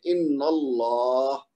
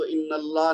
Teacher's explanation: تو نون کے اوپر زبر ہے تو لہذا اللہ کا لام موٹا پڑا جائے گا